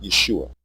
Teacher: The pronunciation Yeshua has two degraded vowels, a short E and a long U. The E is a contraction of the A vowel, and the long U is a contraction of the long O vowel, and we are deleting both.